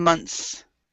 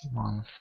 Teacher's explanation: the difference is the tongue for the months for the plural one, the tongue is behind your teeth, and for the month, the tongue is between your teeth